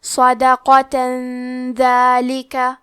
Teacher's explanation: اخفاء کا معنی ہے چھپا دینا تو ہم تنوین کو چھپاتے ہوئے اور غنہ کے ساتھ یہ حکم کو ادا کریں گے